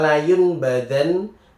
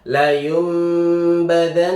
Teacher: Iqlab ini ketika nun sukun atau tanwin bertemu dengan huruf ba itu dibaca tidak pakai suaranya. Bukan nun atau tanwin tapi diganti m. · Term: iklab